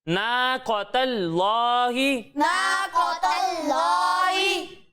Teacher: قوف کو موٹا پڑھنا ہے اور تا کو باریک پڑھنا ہے اور لام کو موٹا پڑھنا ہے